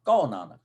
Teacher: ਹਾਹੇ ਨੂੰ ਔਂਕੜ ਦੀ ਬਜਾਏ ਪਿਛਲੇ ਅੱਖਰ ਤੇ ਕਨੌੜਾ ਬੁੱਲੇਗਾ, ਆ ਦੀ ਮਾਤਰਾ, ਤੇ ਹਾਹਾ ਹਲਕਾ ਜਿਹਾ ਬੁੱਲੇਗਾ। ਜਿੱਦਾਂ ਜੇ ਮੈਂ ਇੱਥੇ ਬੋਲਾਂਗਾ ਤੇ ਮੈਂ ਇੱਥੇ ਬੋਲਾਂਗਾ ਕੌ, ਕੌ ਨਹੀਂ ਕਹਾਂਗਾ, ਕੌ, ਹਲਕਾ ਜਿਹਾ ਹਾਹਾ।